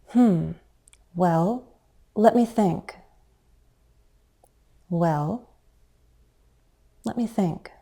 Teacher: Many speakers use a fall-rise on the word well.